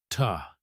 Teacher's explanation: You put your tongue behind your upper teeth and release a puff of air.